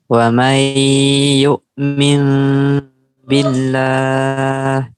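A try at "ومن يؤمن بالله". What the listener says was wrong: Iya, billah. Bagus.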